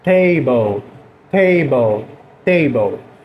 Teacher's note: Lembrem do T, esse T que a língua ela passa um pouco do dente.